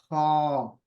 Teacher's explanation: भी जो है स्क्रैची साउंड नहीं होना चाहिए ये गलत है ख नरमी से पढ़ना चाहिए लेकिन यह हुरूफ मोटा है बारीक नहीं है